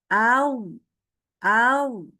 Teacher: Kalau kita letakkan tangan kita ke depan mulut, itu nggak ada hembusan udara. Gitu ya. Dia terdengar dengan jelas karena suaranya cuman suara saja, tidak ada suara hembusan, gitu ya. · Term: jahar